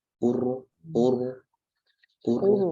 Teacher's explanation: Juga kalau misalnya ro itu ro itu dalam kondisi sukun ya. Ro itu sukun, kemudian sebelumnya dhammah juga monyong.